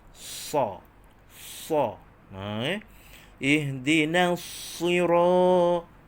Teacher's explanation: Huruf sad ni tuan-tuan, hujung lidah kita sentuh pada antara gusi dan gigi bawah. Jadi lengkungan lidah kita itu, melengkung lidah kita itu, atas lidah itu keluar angin di situ, makhrajnya di situ.